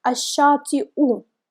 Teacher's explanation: As you can see, hamza is written above nabira, but we don't pronounce this letter that hamza is written on. We just pronounce hamza by itself with the extra vowel sound u.